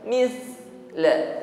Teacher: Jadi tidak ada bunyi desis ketika mengucapkan sa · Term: sifat hamus